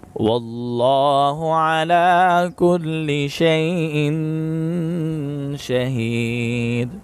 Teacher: لفظ اللہ کے لام کو موٹا پڑھیں گے اور لام پر کھڑی زبر ہے، اس کو ایک الف کے برابر کھینچ کر پڑھیں گے، یہاں پر اخفا کریں گے، دال پر قلقلہ کریں گے۔